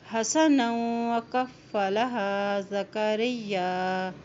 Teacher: نون کی دو زبر کو واو کے ساتھ ملاتے ہوئے پڑھیں گے، واو کے پر شد ہے